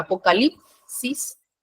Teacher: en lip es donde se carga la voz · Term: sílaba tónica